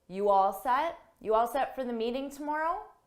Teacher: to show it's a question, we can use a rising intonation at the end to show it's a question.